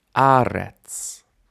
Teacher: You might have noticed aretz has initial stress